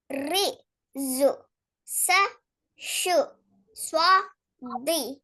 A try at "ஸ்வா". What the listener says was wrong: கூட கூட நீட்டுறது ஸ்வா அல்ல ஸ்வா ஸ்வா அதுல மிக கவனமா இருக்கணும் விளங்குதானா நீட்டிடக்கூடாது நீட்டுதல் வந்து விடக்கூடாது ஸ்வா அவ்வளவுதான் நம்பர் 2 செகண்ட் லைன் சொல்லுங்க செகண்ட் லைன்